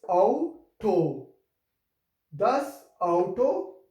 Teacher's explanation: the sound of a, u or a, u will be like ow, ow. Therefore it's auto.